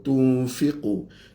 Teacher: nun dengan fa jadi ikhfa